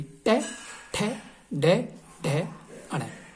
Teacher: मूर्धन्य बोलते हैं जिनमें जीभ मुड़ती है